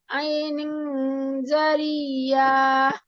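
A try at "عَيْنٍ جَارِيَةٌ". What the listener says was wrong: ইয়া টান নেই আপু, আইনিং, আইনিং জারিয়া।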